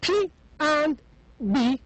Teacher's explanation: I indeed stop the air completely by my two lips then I release it and I let it go and as such the p and the B are called stop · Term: stop sounds